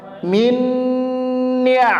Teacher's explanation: ditahan dua harakat dengungnya sekali lagi ditahan dua harakat